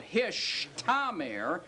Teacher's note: do you realize that you can slide from the sh to the t sound very easily?